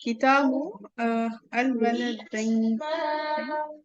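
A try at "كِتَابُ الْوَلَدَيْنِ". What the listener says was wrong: अब बिल्कुल सही किया, इसको मिला दें, अल को अलग से नहीं, मिला दें किताब से।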